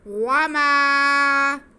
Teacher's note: وما, واو پہ زبر ہے, میم پہ زبر ہے, لیکن میم کے ساتھ الف ہے جو کہ الف مدہ ہے, تو میم کی آواز کو ہم ایک الف کے برابر کھینچیں گے. وما, ناک میں نہیں لے کے جائیں گے, آواز کو ناک میں بالکل نہیں لے کے جائیں گے.